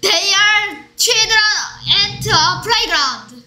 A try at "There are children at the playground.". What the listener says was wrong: 오케이, 근데 they로 들렸어. There are. At the인데 at a라 그랬어.